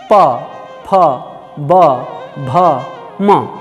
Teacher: फिर प फ, होंठ टकरा रहे हैं। प फ ब भ म, आपके होंठ आपस में टकरा रहे हैं